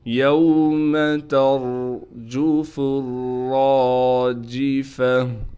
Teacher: یہاں بھی را کو موٹا کر کے پڑھیں گے، فا کو را سے ملا دیں گے، را پر تشدید ہونے کی وجہ سے تھوڑا ٹھہراؤ کیا جائے گا، را کے بعد الف ہونے کی وجہ سے را کو کھینچیں گے بھی اور را کو موٹا کر کے بھی پڑھیں گے۔ گول تا وقف کی حالت میں ہا بن جائے گی۔